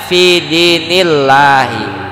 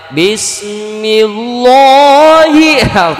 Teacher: kalau sebelumnya harkat kasrah maka lam lafaz jalalah dibaca tipis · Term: tarqiq